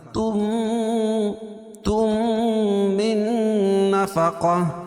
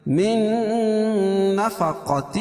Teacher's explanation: نون ساکن کے بعد ادغام مع الغنہ کے 4 حرفوں میں سے نون ہے، تو یہ ناک میں آواز کو لے جائیں گے، غنہ کریں گے